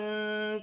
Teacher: سین ساکن ہے، سین کو واو کے ساتھ ملا کر پڑھا جائے گا، غائن بھی ساکن ہے، غائن کو تا کے ساتھ ملا کر پڑھا جائے گا، اور نون پر کھڑی زبر ہے، وف کی صورت میں ایسے پڑھی جائے گی جیسے لکھی ہے، جیسے وَاسْتَغْنَا.